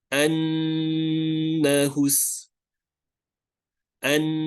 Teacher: notice that for the Nun shadda, I lengthen the Nun sound much longer, right? So that is a total of 2 counts. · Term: nasalization